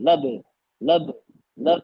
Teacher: कलकला हो रहा आवाज पलट के आ रही है · یہ اب یہاں ہے لم یلد ولم یولد، لد یہاں اور لد قلقلہ ہو رہا، آواز پلٹ کے آ رہی، لد لد لد قلقلہ ہو رہا نا.